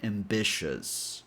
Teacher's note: The three vowels, i o u, form one sound only since the syllable is not emphasized.